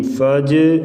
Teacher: زبر یا تا زبر تا یا تا، فا زبر جیم فج، قلقلہ کریں گے، جیم ساکن ہے، حروف قلقلہ میں سے ہے